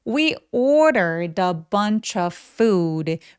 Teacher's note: food 할 때 입술 쭉 우 소리